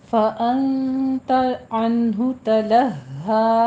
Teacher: अंता में इख्फा हकीकी करना है, 2 काउंट करने हैं। · अनहु में इजहार हल्की है, लंबा नहीं खींचना, बस जल्दी पड़ जाना है।